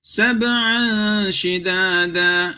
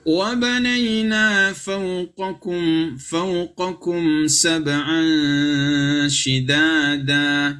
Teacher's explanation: Sab'an shidada, terlalu cepat. Yang benar adalah unsur n-nya itu disamarkan dan ditahan dua harokat.